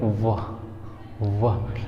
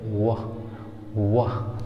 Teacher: हमारा अपर टीथ जो है वो लोअर लिप से टच होगा, और तब बोलेंगे वाह वाह। लेकिन जब हम इसकी बात करेंगे डब्लू वाले की, तब वहाँ हमारा दोनों लिप गोल होगा, राउंड होगा